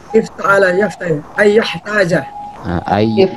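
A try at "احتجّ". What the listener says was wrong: Jangan ya harus tasydid lah, makanya di sini kefasihan itu harus benar-benar lah. Ayah tajah seperti itu loh.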